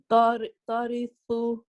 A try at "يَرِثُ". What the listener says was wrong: That's a ya. It's not yarithu.